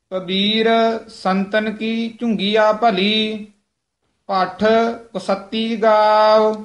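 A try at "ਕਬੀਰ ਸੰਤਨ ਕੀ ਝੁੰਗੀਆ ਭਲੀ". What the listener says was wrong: कबीर संतन की झुंगिया भली, झुंगिया बोलना, कितने झुगिया नहीं कह देना, पाठ ये थोड़ा जा कस के बोलना है। कई पाठी सिंह जिन्हें दी संथ्या नहीं कीती होंगी वो कुश्ती कह जाते हैं, इस करके ध्यान ना कुश्ती नहीं कहना है, तो गलत है।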